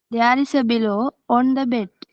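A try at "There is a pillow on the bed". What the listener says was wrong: No, it's not below, it's a pillow. P. There's a pillow on the bed, correct?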